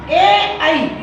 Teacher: कंठ और तालु दोनों से बोले जाते हैं, इसलिए इनका उच्चारण स्थान हो गया कंठ तालव्य। अकेला कंठ नहीं बताएंगे, अकेला तालु नहीं बताएंगे, कंठ तालव्य है इनका उच्चारण स्थान।